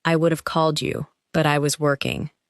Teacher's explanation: In natural speech, this may become, I would have called you, but I was working. The words would have become would've. In even more relaxed speech, the sound may be very short.